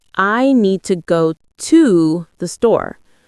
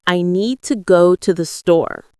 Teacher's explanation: The stress is on need and store, while to andthe are softer and faster.